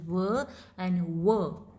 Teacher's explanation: इसमें जो हमारा शेप है मुंह का वो राउंड हो जाता है